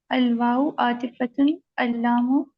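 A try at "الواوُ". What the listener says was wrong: अलवा ऊ क्यों होगा? वाह वो नहीं हो सकता। वाह वो वो पेश वो।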